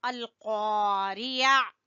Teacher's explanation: قاف کو زبان کی جڑ سے اور الف مدہ ہے